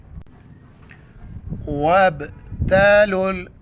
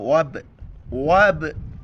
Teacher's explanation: دیکھیں یہاں پر میں نے جھٹکے کے ساتھ پڑھا، اس کو کہتے ہیں قلقلہ. قلقلہ با ساکن ہے، جھٹکے کے ساتھ پڑھا جاتا ہے. قلقلہ کہتے ہیں آواز کا پوری منہ کے اندر راؤنڈ کرنا، گھومنا.